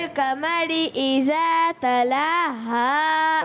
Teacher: را کو پر نہیں کریں گے, باریک, اور ذال کی ادائیگی آپ پیارے کو موٹا بچے.